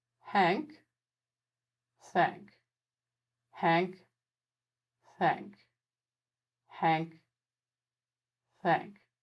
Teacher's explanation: forward but your tongue is staying perfectly still now watch as i change the h friction sound into a th friction sound by aiming my tongue tip upwards a little